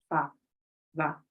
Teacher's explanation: You put the lip into here, the teeth. It's the lip and the tip, the upper teeth and the lower lip. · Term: labio dental